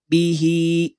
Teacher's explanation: begitu pula saat wasal saat tersambung Hi tetap dibaca panjang dua harakat